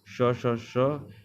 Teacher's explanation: ये अघोष और महाप्राण होते हैं